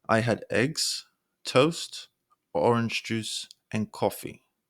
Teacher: Your voice falling on coffee. This signals that there's more coming, whereas using a downward inflection signals the end of the thought. · So when you're listing items, your pitch rises slightly on each item except for the last one, which indicates the end of the list. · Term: held lists